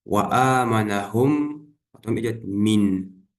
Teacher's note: Если после пустого мима следует мим, то первый мим не читается, а второй удваивается, удлиняя назализацию на 2 огласовки.